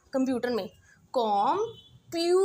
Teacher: कम और टर पे मैं बहुत कम स्ट्रेस दे रही हूँ, तो वो मेरा वीक सिलेबल आ गया